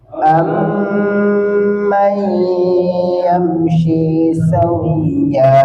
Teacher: Kemudian ini ada nun mati ketemu ya. Nun sukun ketemu ya. Hukumnya idgham bi gunnah, makanya dia harus ditahan.